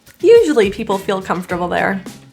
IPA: ˈjuʒəli ˈpipəl fil ˈkʌmftərbəl ðɛr